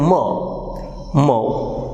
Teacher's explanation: Two lips comes together, the lower lip and upper lip, they block the air stream, and when they are released we hear plosive.